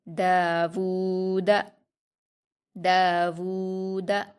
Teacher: لہو داود، دال پر الف مدہ ہے، اس کو 2 حرکات کھینچ کر پڑھیں گے۔ واو پر الٹا پیش ہے، اس کو ہم واو مدہ کی طرح 2 حرکات کھینچ کر پڑھیں گے۔ دال پر حرکت اس کو جلدی پڑھیں گے، داود داود۔